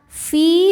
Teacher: Sebab ada ya sukun sebelumnya baris kasrah. Cara bacanya panjang dua harakat. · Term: mad thobi'i zohiri